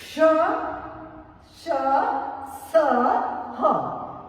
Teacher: क्ष, श, स, ह, ये ऊष्म है, क्योंकि जब हम इनको बोलते हैं तो हमारी जीभ रगड़ खाती है, इसमें गर्मी सी उत्पन्न होती है